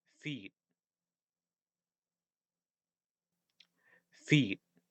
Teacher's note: I think I actually pronounced this T as like a glottal stop.